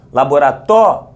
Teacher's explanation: a sílaba tônica é a penúltima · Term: paroxítona